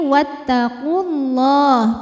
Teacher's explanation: Kalau diteruskan ini wattaqulah pendek qofnya kemudian lam jalalahnya dibaca secara tafkhim